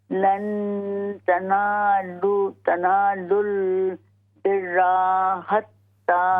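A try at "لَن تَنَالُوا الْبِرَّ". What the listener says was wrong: बिर्रा, रा पर सिर्फ ज़बर, लंबा न करें।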